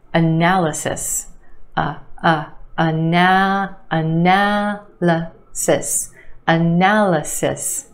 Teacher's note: Four syllables in this word with emphasis on the second syllable, the a sound, analysis. And yes, there are two schwas in this word, the first syllable and the third